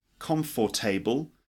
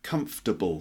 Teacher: it's not calm for table just comfortable three syllables